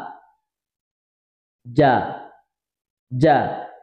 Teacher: jim, tengah lisan, tegas, jahar, dan juga syiddah